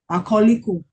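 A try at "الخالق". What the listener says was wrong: al, you're leaving out the lam. The lam tarif has sukun. Al khaliqu. Al khaliqu. So we pronounce the lam with sukun because kha is a moon letter.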